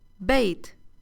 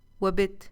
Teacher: بيت has a long vowel ياء, whereas بت has a short vowel كسرة